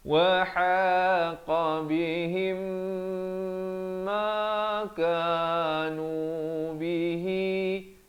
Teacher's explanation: Mim mati bertemu mim kena dengung 2 harakat di sini. Idgham mislan saghir.